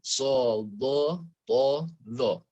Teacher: Sodoto huruf itbaq tengah lidahnya diangkat, lekatkan ke langit-langit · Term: sifat itbaq